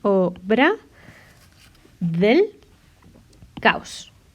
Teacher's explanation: Entonces, ese hiato, con la sinéresis, lo que voy a hacer es, en vez de hiato, que es separar, diptongo, que lo uno. Entonces se queda así, obra del caos.